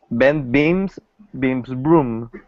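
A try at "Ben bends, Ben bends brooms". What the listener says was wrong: So remember, it's bends, not beans. Bends.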